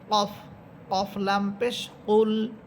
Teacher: এটা হচ্ছে কফ, জিব্বার গোনা উপরে তারুর সাথে লাগবে।